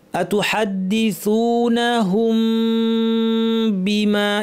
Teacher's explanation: মিমের গুনাটাকে লম্বা করে দিতে হবে · আতুহাদ্দিসুনাহুম বি, মিম সাকিনের পর বা আসলে মিমের গুণনাটাকে লম্বা করে দিতে হবে, এটাকে ইখফা বলা হয়। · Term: ইফা, মিমের ইখফা